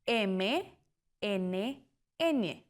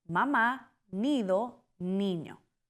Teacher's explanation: Nasales. El aire sale por la nariz.